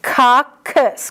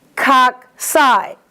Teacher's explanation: It's coccus, k for singular, cocci, k-s for plural.